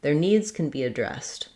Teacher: As a helping verb, can be, I tend to just use the n sound, can be addressed. Their needs can be addressed, stressing on the dressed syllable.